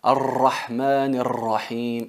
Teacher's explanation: Pegar la extremidad de la lengua, el ápice de la lengua con el punto del paladar duro, pero no hay que dejar que la lengua vibre.